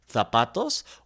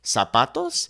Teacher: So in the word zapatos, for example, in Spain, we would use the kind of the TH sound, zapatos, whereas in Latin America, we would simply make that S sound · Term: ceceo